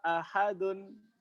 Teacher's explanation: Imam Qalun punya bacaan hadzf, menghilangkan hamzah sama sekali.